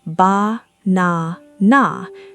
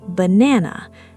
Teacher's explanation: But in English, we say banana. The middle sound is strong and clear. The first and last are weak and short, almost like they are whispered.